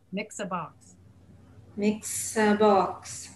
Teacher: In English, almost every a sound, if it means the word like a box, a table, we do not pronounce it a. We pronounce it the schwa sound.